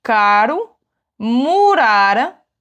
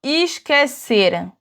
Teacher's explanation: le R entre 2 voyelles, il va être un petit peu plus doux et plus roulé.